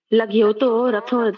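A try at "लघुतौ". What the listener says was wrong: लगयुतो क्यों बोल रही हो? लगयुतऊ बोलो, लगयुतऊ। लगयुतऊ, अस्पष्ट होना चाहिए, बोलो लगयुतऊ।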